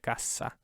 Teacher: Because it's doubled, so it keeps the S sound, and it's pronounced twice as long, right? Cassa.